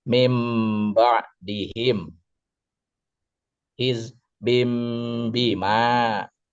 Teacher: Cara membacanya adalah dengan merubah bunyi nun sukun atau tanwin menjadi bunyi mim sukun. Saat membunyikan mim sukun dua bibir ditutup dengan tidak terlalu rapat disertai dengung selama dua harakat · Sedangkan secara istilah adalah mengubah bunyi nun sukun. atau tanwin menjadi bunyi mim sukun ketika bertemu dengan huruf ba. Cara membacanya adalah dengan merubah bunyi nun sukun atau tanwin menjadi bunyi mim sukun. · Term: iqlab, Iklab